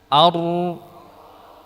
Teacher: Adapun huruf ra udara menyimpang dari celah kecil di bagian tengah. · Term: inhiraf